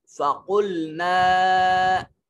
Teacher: جب ہم یہاں فَقُلْنَا پھر رکیں تو پھر ہمیں نا کو مدہ کر کے پڑھنا ہے، اور جب نون کو ضاد کے ساتھ ملائیں گے تو پھر مدہ نہیں پڑھا جائے گا۔